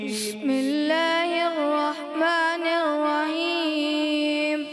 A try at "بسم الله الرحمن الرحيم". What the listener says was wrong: رحیم میں ہا کلیئر کریں. بسم اللہ الرحمن الرحیم.